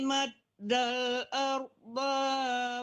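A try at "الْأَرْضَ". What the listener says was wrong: Ardo jangan tertahan, do-nya tidak panjang.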